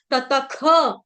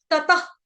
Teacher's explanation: भविष्यति भविष्यति दो विसर्ग है ततख इस विसर्ग का उच्चारण होगा जब आपने सांस छोड़नी है उसमें आना चाहिए साउंड आधे ख की तरह पूरा प्रॉपर वे में ततख ऐसे नहीं बोलना है ऐसे नहीं